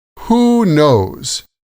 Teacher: the stress is on both words with a pause between them.